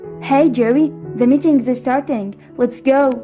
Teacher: it is a first name basis but this sound more commanding it is mostly falling intonation like a statement